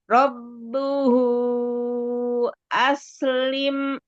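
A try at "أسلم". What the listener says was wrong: Alirkan sinnya biar nggak aslim, aslim ko.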